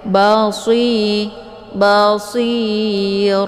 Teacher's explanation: untuk Shad ini dibaca tebal ya dan anginnya lebih jelas karena Shad ini sifatnya adalah saofir Bi Basir jadi posisinya yaitu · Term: shafir